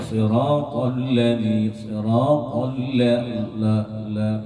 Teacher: Siratal ladzi, ta ke huruf lam, huruf ta itu harus isti'la, sedangkan huruf lam harus istifal la. Karena dia tidak jalalah.